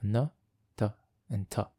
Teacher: the coronal consonants, where the airflow is obstructed using the flexible front part of the tongue